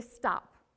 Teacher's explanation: you felt a puff of air when you said the pu right the p at the end but the t you did not